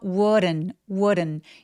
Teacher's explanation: 이 D는 약간 굴러가는 느낌으로 발음해요. 그래서 wouldn't 이렇게 리을과 비슷하게 소리 내시면 됩니다. It wouldn't take long.